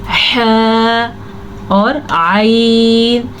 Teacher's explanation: ये दोनों जो हैं हलक के दरमियान वाले हिस्से से निकलते हैं